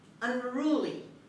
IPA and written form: ʌnˈruːli (unruly)